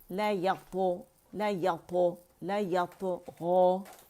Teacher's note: اس میں قلقلہ اس لیے کیا جاتا ہے کہ اس میں اطباق ہے اور شدہ بھی ہے طا کے اندر، تو اس کو قلقلہ ختم کرنے کے اس کا شدہ ختم کرنے کے لیے، شدہ کسے کہتے ہیں کہ جب اس مخرج کو طا کے مخرج کو جاتے ہیں تو اس کی آواز سختی ادا کرنے کے لیے، تو اس کی آواز سختی اور قوت کے ساتھ جا کے ٹھہر جاتی، بند ہو جاتی.